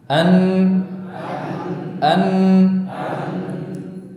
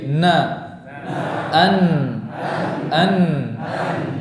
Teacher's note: huruf nun pengucapannya juga disertai dengan udara yang mengalir dari khayshum, gunnah